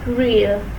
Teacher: It is a retroflex sound as the tip of the tongue goes up and curls back in its articulation.